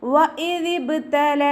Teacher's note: ദാലിൻ്റെ മഖ്റജ് വരുന്നത് നമ്മുടെ നാവിൻ്റെ അറ്റവും മേലെ മുൻപല്ലിൻ്റെ അറ്റവും ചേർന്നിട്ടാണ്.